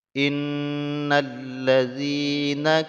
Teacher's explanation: Nah, di ayat yang ke-6 ini ya, ataupun ayat yang pertama kita baca, yang pertama di sini ada nun yang bertasydid. Nun yang bertasydid ini dibaca dengung ya, gunnah yang kamilah. Jadi ada dua huruf nun dan mim yang bertasydid, maka dia diwajibkan untuk didengungkan kadar 2 harokat.